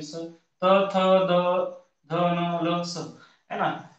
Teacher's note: या वर्णांचा उच्चार करताना दाताला स्पर्श करते म्हणून याला आपण दंतवर्ण म्हणतो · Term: दंत्य वर्ण